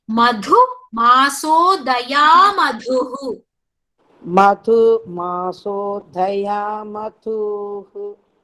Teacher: Daya da is alpa prana. Madhu dha is Mahaprana.